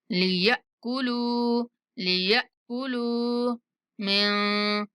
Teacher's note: آخری لام کو کھینچ کے پڑھیں گے، اس کے بعد واو مدہ ہے